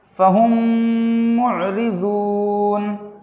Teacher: اس مثال میں بھی میم ساکن کے بعد میم آیا ہے، اس لیے میم کو میم سے ملا کر غننے کے ساتھ پڑھ رہے ہیں۔ · فہم معرضون، فا زبر فا، ہا میم میم پیش ہم، فہم، میم عین پیش مع، فہم مع، را زیر ری، فہم معری، ضاد واو پیش ذو، فہم معرضو، نون زبرنا، فہم معرضون، فہم معرضون۔ اس مثال میں بھی میم ساکن کے بعد میم آیا ہے، میم کو میم سے ملا کر غننے کے ساتھ پڑھ رہے ہیں